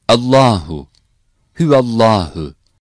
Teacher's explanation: When the letter before the word Allah as Fetha or Damme or the word Allah comes at the beginning, lam is pronounced strong.